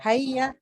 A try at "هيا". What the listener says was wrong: حیا نہیں ہے، ہیا ہے، ہیا.